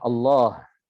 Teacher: lafzul jalalah Allah adalah huruf H. Ini harus dibaca dengan jelas, tidak boleh dihilangkan.